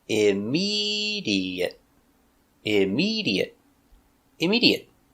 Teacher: Four syllables. Stress on the second syllable.